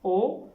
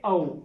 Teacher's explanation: ओ और औ ये दो वर्ण हैं जो कंठ और ओष्ठ दोनों से मिलकर के उच्चारित होते हैं, इसलिए इनको हम कंठोष्ठ वर्ण कहते हैं।